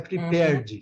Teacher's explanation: Você já vai do R para o D.